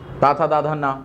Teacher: दंत यानी दांतों के सहयोग से बोला जाता है।